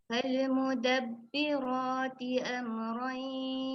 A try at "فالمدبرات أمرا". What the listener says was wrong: Okey, pada huruf ra tebalkan sikit lagi. Pada huruf ra tebalkan sedikit lagi bacaannya. Fal mudabbira.